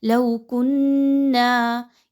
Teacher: کنّا یہاں پہ نون مشدد کا غنہ ہے، کاف اور نون کو ملاتے ہوئے اچھے طریقے سے آواز کو ایک الف کے برابر ناک میں روک کر رکھیے